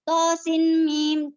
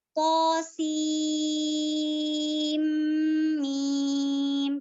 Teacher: Jadi dia langsung diidghamkan, langsung dimasukkan ke mim. Jadi nunnya itu nggak dibaca.